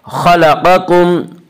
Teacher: खा और क़ाफ को पुर पढ़ेंगे। खा और क़ाफ हुरूफ़ मुस्तालिया में से हैं।